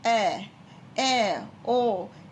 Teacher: अर्धविव्रत स्वर में मुख द्वार आधा खुलता है, जैसे कि ए, ओ, यानी कि पूरा मुंह नहीं खुलेगा, सिर्फ आधा मुंह खुलेगा, ठीक है।